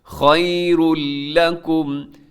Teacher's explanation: خَيْرٌ لَكُمْ خَيْرٌ اور آگے لام ہے تنوین کے بعد لام ادغام بغیر غننے کے